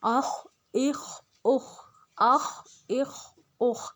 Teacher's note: بس اس میں خا کو ہم نے موٹا رکھنا ہے